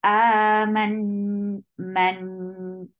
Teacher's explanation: meem is attached with noon. There is akmal gunna